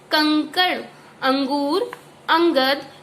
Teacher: यह स्वर के बाद आने वाला व्यंजन है जिसकी ध्वनि नाक से निकलती है। इसको बोलने में हमारी नाक से ध्वनि निकलती है, जैसे कि कंकड़, अंगूर, अंगद, जो ये न की आवाज देता है। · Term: अनुस्वार